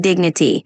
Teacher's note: when you say dignity, just emphasize the first syllable